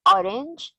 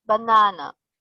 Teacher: the stress in orange is on the first syllable while in banana on the second